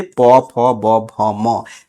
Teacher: ओष्ठ मतलब कि अगर आप ये कोशिश करें कि बिना ओठ को सटाए हुए आप ब का प का उच्चारण कर दे संभव नहीं है। तो दोनों ओठ सट रहा है इसलिए उच्चारण इसका स्थान क्या हो जाएगा? ओष्ठ हो जाएगा।